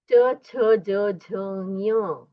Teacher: च छ ज झ ञ उसका उच्चारण तालु से होता है। मतलब दांत के पीछे जो पैेट होता है लो और पैेट उसको स्पर्श करके च वर्ग का उच्चारण होता है।